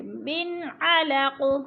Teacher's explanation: نون ساکن کے بعد عین حروف ہلکے میں سے ہے، اظہار ادھر اخفا نہیں کریں گے، ظاہر کر کے لفظ کو پڑھیں گے